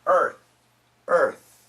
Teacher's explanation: This is an aspirated th. No vibration.